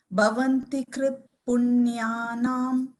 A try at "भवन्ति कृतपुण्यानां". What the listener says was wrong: Only thing, no, just I think the ta actually came as a halanta. Bhavanti krita, full ta. It is krita. Yeah, it is not tam. It is ta. Bhavanti krita punyana.